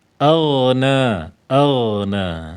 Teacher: huruf ghin itu memiliki sifat istil'la istilla jadi tebal ya dibaca tebal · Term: isti'la